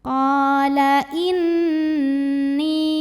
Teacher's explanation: Qala inni, nun tasydid gunnah musyaddadah, sebab nunnya bersyaddah atau bertasydid. Cara bacanya dengung, bunyi n-nya tahan sampai ada getaran halus ke hidung. Ni mad tabi'i, sebab ada ya sukun yang didahului baris kasroh.